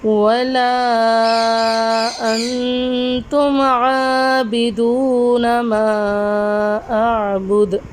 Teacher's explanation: نون ساکن کے آگے حروف اخفا کا قاعدہ ہو رہا ہے تو ادھر ہم غنہ کریں گے · عین پہ کھڑی حرکات ہے، واو ساکن سے پہلے پیش ہے، ادھر واو مدہ کا قاعدہ ہو رہا ہے۔ میم کے آگے الف ہے، ادھر الف مدہ کا قاعدہ ہو رہا ہے، ساتھ میں مد کا قاعدہ ہے۔